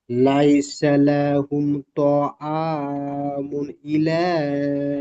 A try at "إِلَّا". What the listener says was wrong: ইলা নই, ইল্লা, হামজাটি লামের সাথে যুক্ত হবে, লামের উপর তাসদিদ এসেছে। ইল্লা।